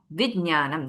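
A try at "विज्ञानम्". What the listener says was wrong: No, that's what I said. Don't highlight the ja. Don't make it like which.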